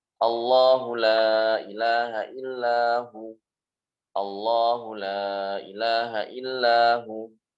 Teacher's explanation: yang tebal itu adalah lamnya. Dan bukan hamzahnya, bukan alifnya, tapi lamnya. Jadi membaca yang tepat itu adalah Allah.